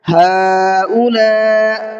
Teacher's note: پہلے والے مد کو کم کھینچنا ہے اور دوسرے والے مد کو زیادہ کھینچنا ہے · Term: بڑا مد